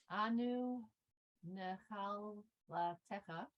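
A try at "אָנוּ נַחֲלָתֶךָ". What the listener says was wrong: Yeah, there's an O that's missing. So necha, yes.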